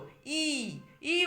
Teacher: আচ্ছা দেখো, হর্ষই ঠোঁটের কুঞ্চন অকুঞ্চনের দিক থেকে হচ্ছে প্রসারিত। ই ই উচ্চারণ করলেই আমাদের ঠোঁট প্রসারিত হচ্ছে ই, এবং জিহ্বা একটু সম্মুখের দিকে এগিয়ে আসার একটা প্রবণতা, মানে উচ্চারণটা সম্মুখের দিকে হচ্ছে।